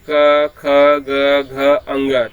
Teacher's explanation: आप अगर क का उच्चारण करेंगे क ख ग घ अंग, तो आप देखेंगे जो है आपका जो कंठ है उस पर बल पड़ रहा है। अगर आप कंठ को दबा देते हैं थोड़ा सा जो है, तो क ख ग घ का उच्चारण ठीक ढंग से नहीं होगा जो है। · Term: कंठ वर्ग